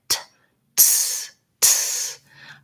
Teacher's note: If I go from the T and I just naturally let my tongue drop, it'll be in the S position. So just keep the air flowing, like t, ts, ts. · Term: TS sound